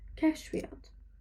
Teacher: İyyat burada şəkilçidir. İyyat şəkilçi olduğuna görə burada y-nın biri düşəcəkdir.